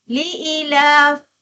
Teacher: dia membaca dengan hazfu ya, maksudnya ya tu tidak dibunyikan